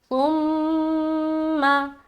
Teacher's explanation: सा को भी बगैर सिटी के नरमी के साथ अदा करेंगे। सुम तुम मीम के ऊपर शद है तो मीम मुशद्द का गुना किया।